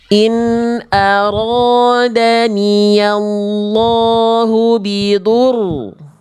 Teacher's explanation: Naikin nada lagi bidur. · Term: naber